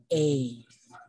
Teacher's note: the A sound is produced when the tongue moves forward and the height of the jaw is at the middle and the duration of the sound is long